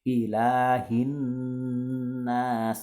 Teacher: contohnya adalah nun yang bertasydid, jadi berdengung